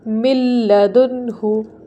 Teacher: نون silent ہے، لام کے اوپر تشدید ہے، اسی لیے میم کو لام سے ملایا